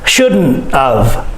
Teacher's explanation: I don't say the T in shouldn't.